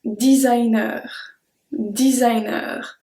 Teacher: So be careful, we don't say designer, we say designer. We say like in English, but we do pronounce the R at the end.